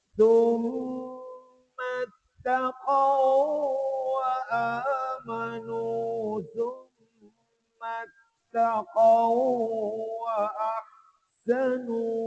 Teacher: dia punya bunyi itu ada idgham panjang sikit ya bukan taqwa ini mesti summa اتقوا وآمنوا ثم اتقوا وأحسنوا.